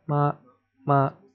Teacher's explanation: So the first tone is high and flat. 妈 妈 It's almost like you're singing a high note.